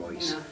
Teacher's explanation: Keep rolling the R's and the I's you're more pronouncing like an OI, like in right